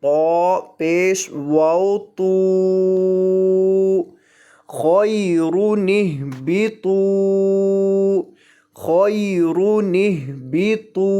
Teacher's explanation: طا کو موٹا کر کے پڑھنا ہے کیونکہ طا موٹے حروف میں سے ہے